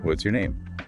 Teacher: Your voice might rise slightly on name, then fall, signaling you're asking for specific information. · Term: Rise, fall